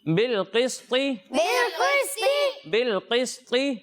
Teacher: قاف کو بھی موٹا پڑھنا ہے اور طا کو بھی موٹا پڑھنا ہے